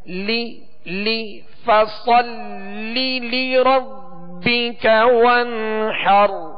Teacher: فَصَلِّ لِي، اب لام کے نیچے زیر، دوسری لام کے نیچے بھی زیر ہے، تو دونوں لام کو ان کی جو حرکت ہے زیر ہے اس کو بغیر کھینچے ادا کریں گے اور آواز کو گرائیں گے